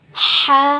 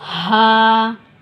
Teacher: ہم نے ح حلق سے ادا کیا ہے اور ہا سینے سے